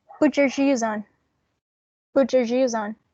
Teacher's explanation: it's a palatal alveolar sound that is in the middle of having a um alveolar sound and a palatal sound